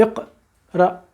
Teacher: یہاں پر حمزہ ساکن ہے اور ہم نے ہلکا سا اس کو جھٹکا دینا ہے، صرف ہلکا سا جھٹکا دینا ہے.